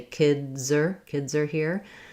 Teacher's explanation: Z is hard to say, but if I say kids are here, my Z really connects to the next sound and makes it easier to say my plural correctly. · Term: linking